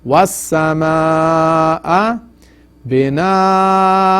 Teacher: So this is madde tawil or madde muttasil. So you stretch it at least 4 haraka, from 4 to 6.